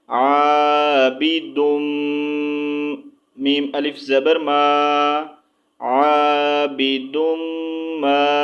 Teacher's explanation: میم مشدد پر کیا ہوتا ہے، ہمیشہ غنہ کر کے پڑھیں گے